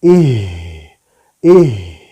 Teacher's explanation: sifat dari huruf ha adalah yang pertama ada al-hamas, ya. Ada udara yang mengalir. Contohnya ih gitu, ya.